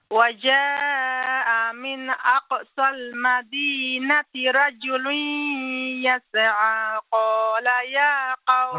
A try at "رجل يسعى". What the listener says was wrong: رجل, again, رجل يسعى, not يسعى. Don't bounce. 2 letters. Number 1 is the letter Sin. Okay, رَجُلٌ يَسْعَى, يَسْعَى.